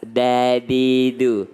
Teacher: Jadi lidah, ujung lidah itu ketemu dengan belakang gigi atas. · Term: huruf dal